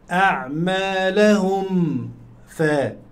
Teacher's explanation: ميم ساكنة بعدها الفاء إظهار شفوي